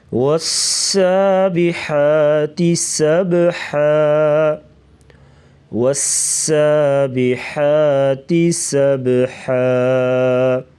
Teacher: سبحا با ساکن ہے تو یہاں پر قلقلہ کر کے پڑھیں گے